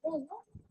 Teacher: the o sound or o vowel is produced at the back of my mouth and it is a closed one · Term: closed vowel